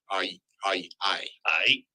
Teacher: the classic example is the letter i which is actually ah and E said very quickly together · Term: diphthong